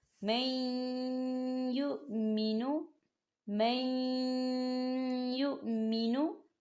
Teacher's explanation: آپ یا کی مثال کو دیکھیں، نون ساکن کے بعد یا آ رہا ہے اور یا کے اوپر تشدید ہے، ہم میم کو یا کے ساتھ ملائیں گے اور نون ساکن کو ہم یا کے اندر مدغم کریں گے